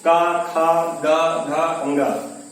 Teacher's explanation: तो इसको आप कंठ से यानी गले से, का, खा, गा, घा, अंगा, यानी सब गले से आपका उच्चारण हो रहा है, कंठ से उच्चारण हो रहा है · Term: कंठ व्यंजन